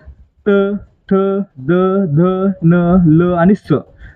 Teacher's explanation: ज्या वर्णाचा उच्चार करताना आपली जीभ आपल्या दातांना स्पर्श करते त्यांना काय म्हणायचं, दंत्यवर्ण म्हणायचं. मग या ठिकाणी पहा, दंत कोणते कोणते आहेत, त, ठ, द, ध, न, ल आणि स.